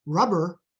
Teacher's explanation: stress on the first syllable week on the second syllable